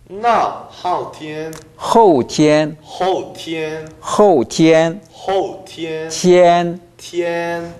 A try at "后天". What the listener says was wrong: 지금 입을 그렇게 안 벌리면 티엔 이렇게 들립니다. 티엔 아니고 티엔 티엔 后天